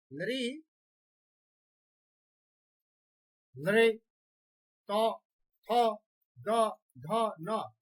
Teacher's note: यदा वदामः अनुभवं कुर्मः तदा अस्माकं जिह्वा अस्माकं दन्तान् स्पृशति